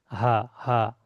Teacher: আচ্ছা, কণ্ঠনালীর শুরু থেকে হামজা, হা, হামজা, হা, হা বলার সময় দেখবেন সিনার কাছে একটু আওয়াজ হচ্ছে